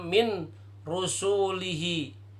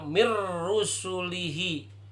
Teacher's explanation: sebelum diidghamkan, maka bacanya min rusulihi. Setelah diidghamkan, maka dibacanya mir rusulihi. Nunnya hilang.